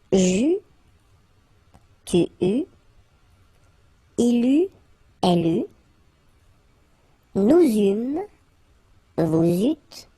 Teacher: Okay, so as you can see, phonetically it's quite a challenge because you've got to keep in mind that for each forms you will pronounce this combination of vowels e, u. You don't pronounce it like normally we would pronounce it e, okay, but we will pronounce it u all the time.